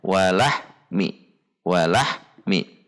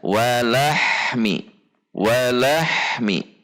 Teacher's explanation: ha memiliki sifat hamas ar-rakhwah, berarti saat sukun harus mengalir, tidak diputus atau dihentak.